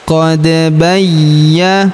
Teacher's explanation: huruf da berharakat sukun kita pantulkan atau kita qalqalahkan. Qad bayya huruf ya berharakat tasydid kita tahan dan tekan.